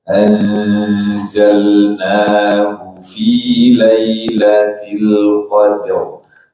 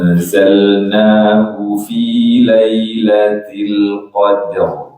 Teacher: Hu-nya kita baca pendek ya, jangan panjangkan di sini. Kecuali kalau dengan riwayat yang lain membaca panjang hu diperkenankan di qiraat Imam Ibnu Katsir.